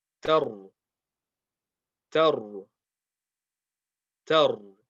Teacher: So here we see the ra is got a sakin. So the letter before it has a fatha. That means this ra will be heavy.